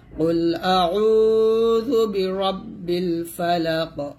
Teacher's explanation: قاف لام পেশ কুল, হামজা জবর আ, আইন ওয়াও পেশ উ, আইন তাবদি কুল আউ, যাল পেশ যু, বা জের বি, র বা জবর রব, বা লাম জের বিল, কুল আউযু বিরাব্বিল, ফা জবর ফা, লাম জবর লা, কফ জের কি, একসাথে পড়লে হবে কুল আউযু বিরাব্বিল ফালাক। এখানে ওয়াকফ দিলে কফটা কলকলা করবেন।